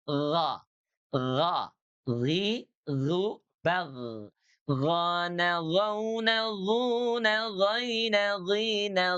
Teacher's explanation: Huruf gin itu keluarnya dari adnal halqi. Huruf ghain dari tenggorokan bagian atas. Tenggorokan terdekat ya. Terdekat dengan pangkal lidah ya.